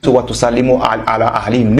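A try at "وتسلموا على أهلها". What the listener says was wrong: Non, ce n'est pas ahlihim, c'est ahliha. Répète.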